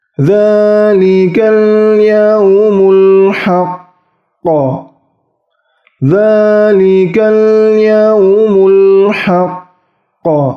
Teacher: Kemudian di Quran surah An-Naba ayat 39, surah An-Naba ayat 39 terdapat qaf bertasdid kemudian bertemu tanda waqaf atau berhenti. Nah, ditahan dan dipantulkan. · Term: qalqalah akbar